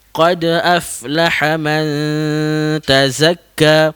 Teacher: huruf fa tersebut angin saja yang keluar